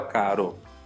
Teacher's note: Então, por exemplo, a palavra caro, né, que eu escrevi com R só, o som é mais brando. É vibrante o som, mas é mais brando. · É vibrante o som, mas é mais brando, então você fala caro.